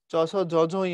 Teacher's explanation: চ ছ জ ঝ ঞ এগুলো তালুতে, তাই এগুলো তালব্য।